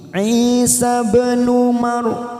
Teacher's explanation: ba sukun warna biru qalqalah sugro, kita pantulkan. Isa bin Maryam, ra sukun kita baca afkim karena didahului fathah.